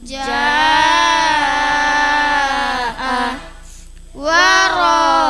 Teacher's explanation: Huruf mad bertemu hamzah dalam satu kalimat panjang lima harakat. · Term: mad wajib muttasil